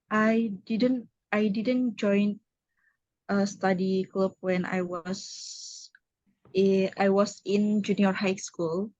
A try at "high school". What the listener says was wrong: Ya, junior high school. Jadi high school ya. Cara bacanya G-nya nggak usah dibaca ya. high. Jadi cara bacanya high. High school.